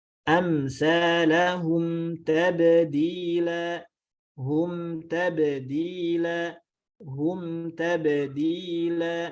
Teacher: kita tidak menambahkan bunyi gunnahnya, tidak dipanjangkan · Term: idhar